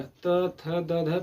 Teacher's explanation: जो हमारी जिह्वा है हमारे दांत के पिछले भाग में टच हो रहा है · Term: दंत वर्ग